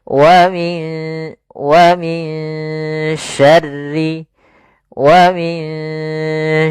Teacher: waminyar waminyar ya ditahan dulu ikhfanya ditahan dulu gunahnya ya sambil disamarkan disamarkan ke syin dan ditahan gunahnya